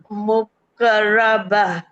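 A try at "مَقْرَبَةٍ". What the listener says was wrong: मक़रबा। Rounding कहाँ से याद आई? वाव तो था नहीं, दोम्मा भी नहीं था। जब हम पढ़ रहे होते हैं ना, बाज दफा हम कहीं और से भी थोड़ा सा पढ़ रहे होते हैं, आगे पीछे से।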